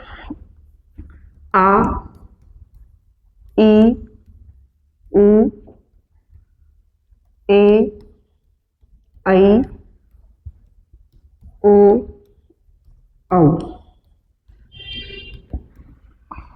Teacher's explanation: दीर्घ स्वरों की बात करें तो लघु स्वरों की तुलना में दुगना समय लगता है, अर्थात 2 मात्रा का समय लगता है, उन्हें दीर्घ स्वर बोलते हैं।